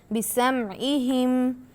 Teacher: سین پھر سے سیٹی کی آواز